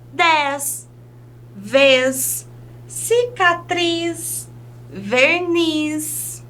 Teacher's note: Nós também sabemos que algumas palavras terminadas em Z vai trazer um som bem próximo da letra S. Vai depender um pouquinho também do sotaque da pessoa que vai marcar mais o Z, mas outras pessoas aproximam esse fonema mais para o S mesmo